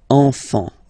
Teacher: Don't pronounce the T, you don't pronounce the S.